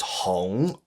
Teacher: It's a mid-rising tone, so it's Hong